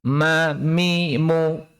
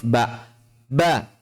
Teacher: Perbedaan antara mim dan ba adalah bahwa mim disertai dengan ghunnah. Sedangkan ba tidak memiliki ghunnah.